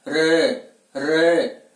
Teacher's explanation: और लुंठित जिन वर्णों का या जिस वर्ण का उच्चारण करते समय श्वास वायु जिह्वा से लुढ़कती हुई बाहर की ओर गमन करती है उन्हें लुंठित वर्ण कहा जाता है।